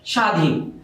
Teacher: বফলা থাকার কারণে এই দন্ত স এখানে তালব্য স হয়ে গেছে